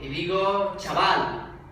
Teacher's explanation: en español hay un único sonido africado, una africada sorda, además palato-alveolar, que es la che